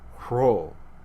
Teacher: And then another strange thing is that initial rows were also aspirated. That is, they had this rough breath put on the front of them.